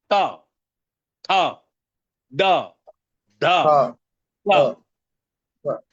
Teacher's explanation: त जीभ कहां छूती ये दांत को छूती है।